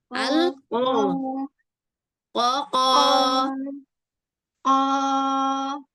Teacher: Yang ngangkat itu bagian belakangnya, bagian depan enggak keangkat.